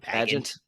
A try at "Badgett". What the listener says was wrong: It's not like Bag Boy, it's Badgett.